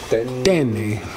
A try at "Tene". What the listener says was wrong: Get your T's right.